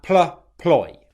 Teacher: we want to make sure that we're stressing that ploy